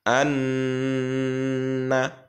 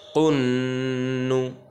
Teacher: কিন্তু আন বলার সময় একটা গুনগুন আওয়াজ হবে। হ্যাঁ, এটা গুন্না বলে, এটা গুন্না ওয়াজিব, এটা আবশ্যক।